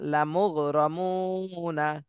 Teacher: এখানে মদের হরফের বামের হরফে ওয়াকফ হচ্ছে এজন্য এখানে তিন আলিফ টান দিতে হবে এই মদের হরফের তিন আলিফ টান দিতে হবে আর ওয়াকফের সময়